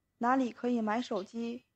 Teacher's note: See, in that my, it really doesn't sound like the third tone.